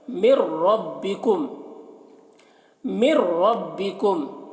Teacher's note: میم مشدد ہے، میم میں غنہ کریں گے، اور ربکم میم میں اظہار شفوی ہو رہا ہے، اسے جلد پڑھیں گے جیسے ہم تم کی میم کو پڑھتے ہیں۔ · مر ربکم، مر ربکم، یہاں پر ادغام بلا غنہ ہو رہا ہے، مر میں مر، تو یہاں پر نون کو نہیں پڑھا جائے گا کیونکہ نون ساکن کے بعد جب حروف یرملون میں سے را آئے تو نون کو را سے ملا کر پڑھتے ہیں بغیر غنہ کے